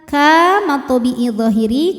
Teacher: karena ada Alif didahului fathah maka kafnya panjang dua harakat